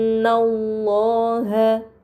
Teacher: Maka harus dibaca dengan gunah yang dipanjangkan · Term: huruf gunah